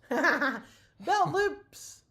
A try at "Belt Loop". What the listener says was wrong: Not loops. Loop. There's no S there.